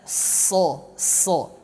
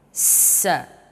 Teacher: Kalau tadi di ayat pertama anasad, dia tafkhim, sin di sini tipis, ya. Meskipun sad dengan sin satu makhraj, ujung lidah menempel menyentuh pada gigi seri bagian bawah, ya, bagian ujungnya.